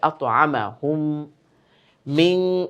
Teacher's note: মিম সাকিনের পরে মিম, তার মানে মিম সাকিনের ইদগাম। গুন্নাও হবে, ওই মিমটা, এই মিমটা বাদ দিয়ে ওই মিমটাকে ধরে ফেলবে।